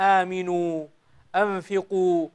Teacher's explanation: الواو هنا تمد مدا طبيعيا بمقدار حركتين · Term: مد طبيعي